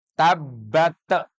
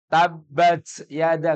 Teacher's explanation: Yang ada ta itu adalah huruf hams sifatnya hams hams itu desisan kecil maka kalau kita membaca tabbat itu kecil aja sekiranya kita saja